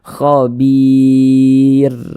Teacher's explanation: Kalau ada huruf ra sukun, sebelum ra sukun ada huruf ya sukun, maka huruf ra sukunnya dibaca tarkik, dibaca tipis. Ingat tipis kan huruf ra-nya.